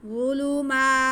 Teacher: میم پہ کھڑا زبر ہے، اس کو 1 الف کے برابر کھینچیں گے